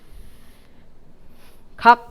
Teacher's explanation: 종성은 뒤에 파열을 하지 않고 끝나거든요. 폐쇄인 상태에서 끝나야 돼요.